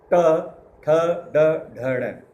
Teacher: जीभ जब उल्टी लगती है ट तालवे पे, ट, ठ, ड, ढ, अण, अण। उल्टी जीभ, हमारी जीभ पलटती है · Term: मूर्धन्य स्वर